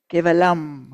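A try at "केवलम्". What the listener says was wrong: Kevalang. No, you don't close your lips. Kevalang.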